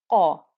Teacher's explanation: you can hear that thickness, the heaviness that's come onto the ah noise, that's come with the letter qaf